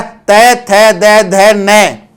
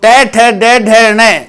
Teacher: हमारी जीवा है वो दांत को छुएगी, और जो ट, ठ, ड, ढ, न इनका उच्चारण करेंगे तो हमारी जीवा जो कठोर भाग है मुर्दा वहां छुएगी